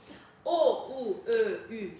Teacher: Dodaqlanan sa tələffüz eledyərkən dodaqlar önə doğru çıxır və dairəvi şəkil alır